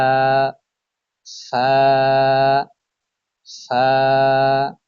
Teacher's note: নিচের ঠোঁটের পেট সামনের উপরের দুই দাঁতের আগার সঙ্গে লাগিয়ে উচ্চারিত হয় সা